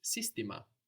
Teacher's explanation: You may notice that the accent is at the beginning of the word system.